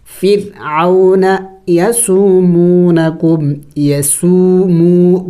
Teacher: یسومو دونوں واو مدہ ہے، ایک الف کے مقدار کھینچیں گے. یسومونکم سوء العذاب، سو سین واو مد پیش، سو حمزہ لام زبر ال، اس الف کو نہیں پڑھیں گے.